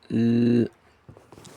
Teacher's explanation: It is a voiced alveolar sound. It is pronounced by placing the tip or blade of your tongue against the alveolar ridge, while letting air flow out around the sides of your tongue.